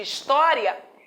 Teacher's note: No caso de história, existe uma tônica, que é a sílaba do meio, existe uma átona antes, né? Para essa átona, nós usamos a seguinte classificação: átona pré-tônica, pois apareceu antes da tônica.